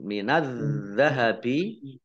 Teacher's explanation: Alif Lam Syamsiah sudah gak dibaca karena tidak dibaca langsung masuk ke huruf berikutnya yaitu Dal ditandai dalalnya dibaca tasdid Dibaca dobel dalalnya Wal fidti alif lam